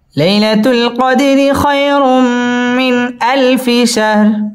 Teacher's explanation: লাই জবরের বাম পাশে জজম ওয়ালা ইয়া, লিনের হরফ তাড়াতাড়ি পড়তে হবে।